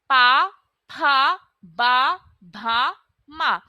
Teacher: तो हमारे जो होठ है वह आपस में स्पर्श हो रहे हैं लिप्स टच हो रहे हैं ना तो वह हो जाएगा आपका उच्चारण स्थान होठ ठीक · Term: पा वर्ग